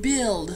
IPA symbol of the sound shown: l